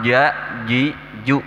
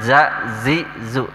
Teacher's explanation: Jim itu makharijul huruf jim itu di tengah-tengah lidah ya. Maka harus betul-betul tidak pecah suaranya.